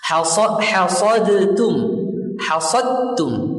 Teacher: Dal dengan ta, dal huruf jahar, ta huruf hamas.